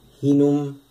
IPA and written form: h|(i)num ((h)inum)